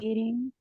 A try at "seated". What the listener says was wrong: confused because it is not sitting. It is not ing. It is the sound, right? Seated.